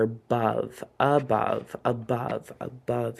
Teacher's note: that schwa sound for that a at the beginning